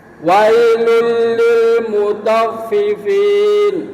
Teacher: fin dan fi jangan seperti ada e-nya